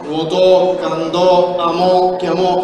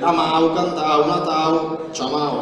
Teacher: Per cui, se prendete la terza persona di un passato remoto, come amau, cantau, natau, vi renderete conto che in italiano quell'au si chiuse